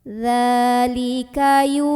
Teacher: Maka cara membacanya adalah huruf ya dipanjangkan sepanjang 2 harokat ya. Jadi waw ini fungsinya sebagai pemanjang, jangan dibaca. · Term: mad tabi'i